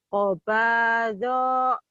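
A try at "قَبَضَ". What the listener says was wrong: Do-nya pendek.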